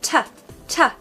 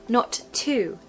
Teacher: a sentence generally when we're speaking it's more like T so we just sort of hint at the vowel after the T sound but it's definitely a very strong T sound